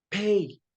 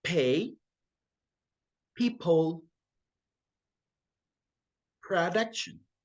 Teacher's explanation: only air passes through the mouth and it is pronounced with the lips closing hmm this means that we need to press our lips together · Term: P sound